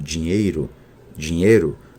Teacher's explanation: Quando ei é seguido de R fraco, como dinheiro, dinheiro, há 98% de monotongação